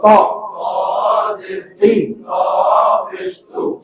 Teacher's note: সামনের ওপরের দুই দাঁতের গোড়া থেকে মোটা ভাবে আদায়